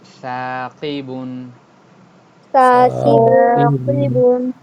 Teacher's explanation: এটা সবসময় একালিফ যে টান আছে সবসময় একালিফ টেনেই পড়তে হবে, ওকে, দ্রুত পড়া যাবে না।